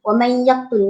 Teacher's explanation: nun mati bertemu dengan ya. Okey, kita kena dengung 2 harakat. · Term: idgham ma'al gunnah